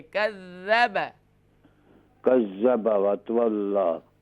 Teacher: کذب زا نہیں ہے یہاں پر، ذال ہے، اس کو سافٹ کریں گے